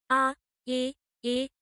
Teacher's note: নিম্ন স্বরধ্বনি। জিভ সবচেয়ে নিচে অবস্থান করে এসব স্বরধ্বনি উচ্চারিত হয়